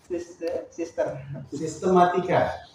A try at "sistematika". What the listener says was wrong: Ya, M-nya satu saja, namanya. Lagi.